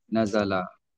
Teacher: Nazala tak perlu dengungkan nun. Berlaku dengung tu hanya bila wasal saja. · Kalau mulakan pada kalimah nazala pun tak ada berdengung pada nun. Nazala. Tak perlu dengungkan nun.